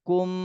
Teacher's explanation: এখানে মিম সাকিনের পরে বা চলে আসছে, এই জন্য এই মিম সাকিনে গুণনা করতে হবে